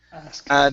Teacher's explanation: so when we pronounce this word, the K is silent. Asked. The E is changed to a T, so it's asked.